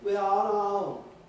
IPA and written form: wi ɑː ɒn ɑː ˈəʊn (We are on our own)